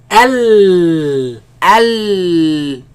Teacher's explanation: The sound escapes on the sides. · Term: lam